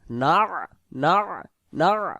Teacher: না বুদু বললে এখানে আইন অক্ষরটা বাদ চলে যাবে।